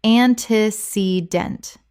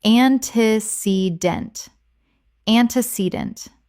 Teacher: 4 syllables with the stress on the third.